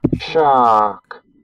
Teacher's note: What we should have is the normal duration of sh, a long duration of the ah, and then a normal duration of the k sound